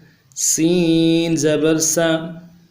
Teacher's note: سیٹی والا حرف ہے، بالکل نرمی کے ساتھ پڑھیں گے